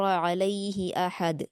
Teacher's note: ہا کو نہیں کھینچیں گے علیہ میں